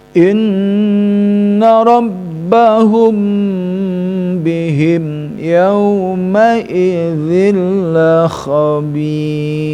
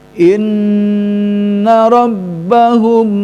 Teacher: Nah itu ya yang harus didengungkan karena in guna musyaddada, juga Al-Qaisum rongga hidung, dan rabbahum mim bertemu sama ba ya, mim sukun bertemu sama ba, hanya mim bersukun sama ba yang harus ditahan karena masuk kepada hukum ikhfa syafawi, karena pertemuan dua huruf antara mim dan ba itu huruf sama-sama huruf asyafatani, huruf dua bibir, sehingga ya di situ harus ada tahanan dengan berdengung, sehingga bacaan kita harus betul diperhatikan.